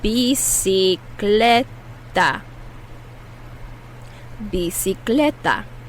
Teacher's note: The first C is pronounced like an S. The second C is pronounced like a K.